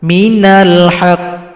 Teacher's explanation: Karena hurufnya bertasydid maka disukunkan, tahan dua ketukan baru dipantulkan.